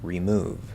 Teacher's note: The stress is still on that second syllable, and that re is super, super short. And it's not just the word remove. · You can use the E vowel, the long E, in an unstressed syllable. This is actually what I would call the fully enunciated version of the word, which we just don't normally use.